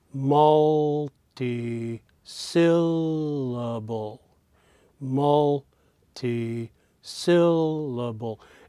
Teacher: sill and Bowl that even though they are three high pitches the middle one in this case sill is the highest pitch we call that therefore the primary stress